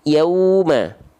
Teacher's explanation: Biasanya karena nggak sempurna menyempurnakan waw sukunnya. Ya, menyempurnakan waw sukunnya dengan cara apa? Maju bibirnya membentuk vokal u. · pastikan bunyi waw sukunnya itu bunyi vokalnya vokal u